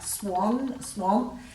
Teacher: If you say the word like swan, swamp, and there's no air after the W, then you know there's no H.